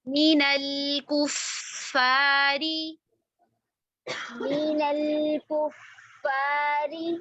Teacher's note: فا مشدد ہے, پہلا فا ساکن ہے, اس کو رکیں, ہمس بھی کرنا ہے اور رخاوہ بھی کرنا ہے